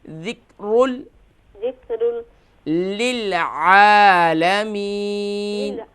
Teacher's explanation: ذکر یہاں پر قاف نہیں ہے بلکہ کاف ہے، تو اس صورت میں ہم یہاں قلقلہ نہیں کریں گے